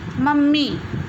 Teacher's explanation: म का उच्चारण 2 बार हो रहा है। एक बार इसका उच्चारण हल्के से हो रहा है, अर्थात अर्ध रूप में हो रहा है, और दूसरी बार पूर्ण रूप में हो रहा है। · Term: द्वित्व व्यंजन